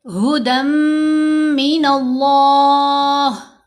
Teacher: दन में जो नून है वो हमने मर्ज कर दी मीम के अंदर साथ हमने गुना कर लिया। · نون کے اوپر زبر آ رہی ہے تو یہ جو لام جلالیہ ہے اس کو موٹا پڑھیں گے، فل ماؤتھ کے ساتھ بھاری آواز بنانی ہے